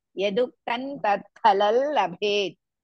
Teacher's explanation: Ha is Mahaprana. Bhe is also Mahaprana.